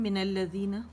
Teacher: یعنی لام شمسی نے لام تعریف کو اپنے اندر مدغم کر لیا